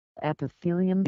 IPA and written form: ˌɛpɪˈθiːliəm (Epithelium)